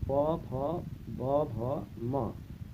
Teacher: बताया इस प वर्ग का उच्चारण ओठ से होता है। ऊपर नीचे के होठों के स्पर्श से ये बोले जाते हैं